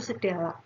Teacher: menggunakan fonem konsonan hambat apikodental bersuara D